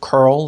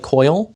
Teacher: that that's basically the curl coil merger. So the word curl sounds like coil.